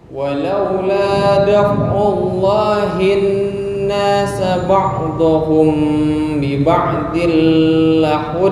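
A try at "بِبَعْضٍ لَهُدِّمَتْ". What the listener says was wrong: Nah, ini nggak boleh lama-lama. Bi ba'dil lahuddimat, nggak boleh bi ba'dil lahud, kelamaan.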